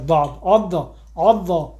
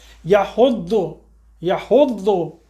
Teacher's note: زبان کو اوپر اٹھائیں، جا کے یہ داڑوں سے زبان ہماری اوپر ٹکرائے گی، لیفٹ یا رائٹ کی داڑھ سے ٹکرائے گی. جیسے وہ ٹکرائے گی یہ وہاں سے داد کا حرف ادا ہوگا، داد عض، یہ پوری اوپر جاتی ہے زبان.